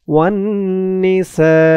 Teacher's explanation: সা সা এখানে ৪ আলিফ টান হবে, মধ্যে মুত্তাসিল।